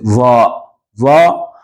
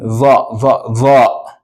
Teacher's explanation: With the dha, the tip of your tongue still touches behind your upper teeth. Behind. Not at the roots, but behind them.